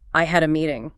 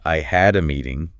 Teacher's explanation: The stress is on had and meeting. Not I had a meeting.